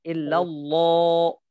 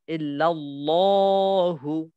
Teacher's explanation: যেহেতু এর আগের হরকতটা জবর এই কারণে এটা মোটা করে পড়বেন